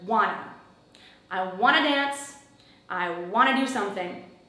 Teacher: Want ends in a T, two begins in a T. So the T's just blend together. We don't hear them.